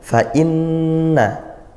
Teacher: Berikutnya di ayat yang kelima, Fa'inna hamzah dikuatkan, inna nun bertasydid, hukumnya gunnah, didengungkan